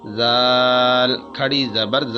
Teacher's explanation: کھڑی زبر جو ہوتی ہے اس کو 1 الف یعنی 2 حرکات کے برابر کھینچ کر پڑھا جاتا ہے۔ زال کے اوپر سیٹی کی آواز نہیں آنی چاہیے اور اس کو 1 الف کے برابر کھینچ کر پڑھیں گے۔ زال کھڑی زبر ز۔